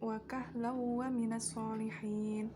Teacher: Terdapat bacaan idgham bi gunnah, yaitu tanwin bertemu dengan wawu. Cara baca idgham dengan memasukkan tanwin ke dalam wawu sehingga bunyi tanwin tersebut hilang berganti dengan wawu.